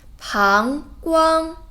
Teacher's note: 膀 second tone 光 flat tone